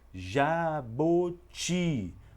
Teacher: mesmo sem ter o sinal Agudo Eu percebo que a sílaba mais forte é também a última sílaba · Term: palavra oxítona